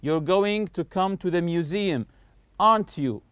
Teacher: When I say aren't you, notice my voice is going higher here. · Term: intonation will go up